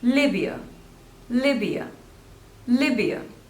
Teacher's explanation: two syllables and the stress is on the first one